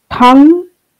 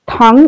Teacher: Thang with a high tone means empty. Thang with a low tone means and.